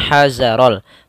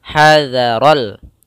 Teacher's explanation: Za tipis. Hadza yaitu ujung lidah kita menempelkan dengan gigi seri. Hadzaral, hati-hati jangan membacanya hazarol, tapi hadza.